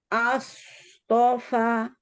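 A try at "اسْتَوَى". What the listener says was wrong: Kurang tebal. Slot sama to-nya. Dua-duanya kurang tebal. Astofa. To, as, to.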